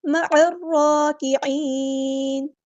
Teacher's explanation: letter ہے، عین بھی باریک ادا کریں گے، لائٹ لیٹر ہے، عین کو مستحلق یعنی مڈل تھروٹ سے ادا کرنا ہے ، اور نون کو ہم ساکن کر دیں گے وقف کرتے